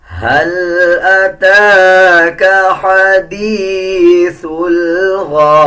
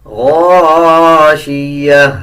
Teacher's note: تا نہیں پڑھا جائے گا, زیر نہیں پڑھا جائے گا, بلکہ تا کو ہا میں تبدیل کر دیں گے اور آدھا ہا پڑھا جائے گا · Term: گول تا